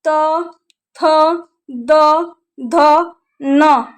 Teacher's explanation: ये 5 अक्षर त, थ, द, ध, न, ये 5 अक्षर आपके दांत यानी जो जीभ है वो जीभ आपके दांत को छुएगी। जब तक आपके तिथ यानी दांत को नहीं छुएगी तब तक आप लोग त, थ, द, ध, न ये 5 अक्षर आप बोल नहीं पाएंगे।